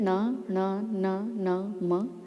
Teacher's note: जब हम इन वर्णों को बोल रहे हैं तो नाक से बोलने की ध्वनि हमें सुनाई दे रही है। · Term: नासिका